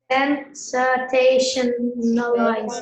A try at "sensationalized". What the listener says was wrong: No. It's not a T sound. T-I-O-N is a shun sound. Sin, say, shun, eyes.